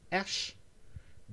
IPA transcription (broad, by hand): ʃ